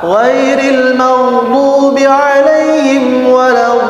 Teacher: jadi ada bunyi memanjang ketika huruf dod itu diucapkan